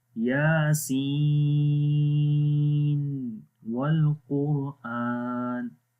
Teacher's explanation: we are not connecting nun sakin with the waw, like we are not entering. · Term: exception place